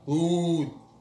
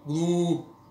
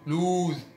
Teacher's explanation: the difference is that oo comes from the back of our mouth. So you can see our lips are together and our mouth is closed to make the sound.